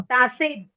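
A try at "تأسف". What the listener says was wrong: नहीं नहीं, बे नहीं है। बे में वो गोला नहीं बनता ना। पे है, पे। का नुक्ता सेंटर में लगा रखा है। तासुफ। हाँ, तासुफ, क्योंकि ता के बाद अगर आप ऊपर देखेंगे, हमजा लगा हुआ है। हमजा क्या करता है? हमजा आपको बताता है, आपने ता पढ़ लिया, ता के बाद जो सिन और फे है उसको अलग पढ़ना है।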